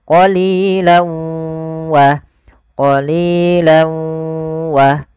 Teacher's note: Kalau idgham bi gunnah yaitu masukkan tanwinnya ke huruf waw, awalnya qalilan, karena ketemu waw masuk ke huruf waw, tanwinnya menjadi qalilaw.